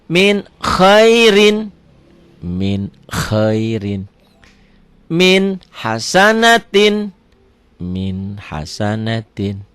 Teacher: Ini keterangan cara membaca idhar pada nun mati atau tanwin itu cukuplah dibaca terang berbunyi N. Tidak usah ditekan dan tidak usah disentakkan.